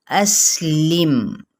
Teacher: سین پہ سیٹی واضح کرتے ہوئے میم پہ اظہار کریں گے